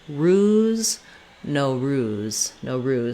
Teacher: We have an O in the first syllable, and then an ruse in the second syllable. The ruse syllable is stressed